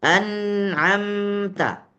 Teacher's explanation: hanya satu harakat saja anamta dan dia punya idgham punya gunah tapi gunahnya hanya satu harakat saja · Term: gunah naqisah